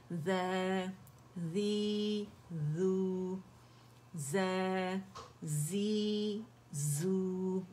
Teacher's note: buzzing sound والا صفیر کا letter ہے